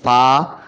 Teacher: ऊपर के जो दांत हैं वो ओठों के साथ लग रहे हैं